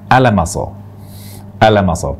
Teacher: Kesalahan pertama, membaca alif, lam, mim, sod ini dengan alamaso. Alamaso, pendek semuanya.